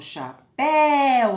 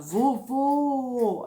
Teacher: chapéu, olha só, o som é aberto, péu. Agora, quando eu falo vuvu, eu já fecho o som, vuvu, né? Fecho o som, a boquinha.